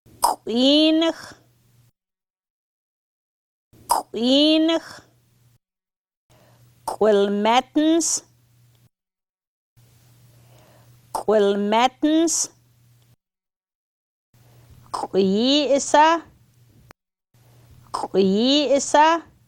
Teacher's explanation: Made the same as the k, written k apostrophe, but with rounded lips.